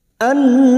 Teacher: Nun yang bertasdid gunna musyaddadah kita dengungkan selama 3 harokat